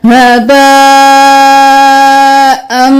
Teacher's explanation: हमजा तो ज़बर मीम अम, हम अन नहीं करेंगे, हमजा को मीम के साथ मिलाएंगे गुन्ना करते हुए